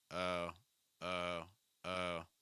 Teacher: my recommendation for American English is keeping the lips straighter the the back of your tongue's a little high and the front of your tongue is down keep your lips straight open them a little bit uh oh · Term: o sound